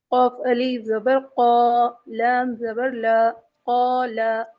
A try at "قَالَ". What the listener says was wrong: کیا غلطی کی ہے انہوں نے؟ کوئی بتائے گا؟ لام کو انہوں نے کھینچ کر پڑھ دیا ہے. حرکات کو نہیں کھینچتے ہیں کبھی.